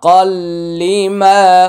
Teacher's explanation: তানুইন এর পরে লাম আসছে ইদগামি বিলা গুন্না গুন্না হবে না